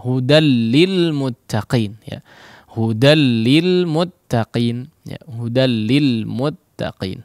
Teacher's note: Millaban, langsung menjadi seolah menjadi tasydid, ya, atau memang dileburkan, ya, nun sukunnya tersebut kepada huruf lam, sehingga seolah tidak ada nun sukun diganti lam yang bertasydid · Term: Idgham bi la gunnah